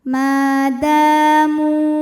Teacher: Mu, hukumnya mad thabi'i dzahiri, karena ada wawu sukun didahului baris dhammah. Maka mim panjang dua harakat. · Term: mad tabi'i zahiri